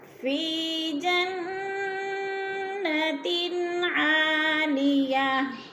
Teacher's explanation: فی کو تھوڑا سا کھینچنا ہے، جنہ کی نون مشدد ہے، غنہ کریں گے، ناک میں آواز لے جائیں گے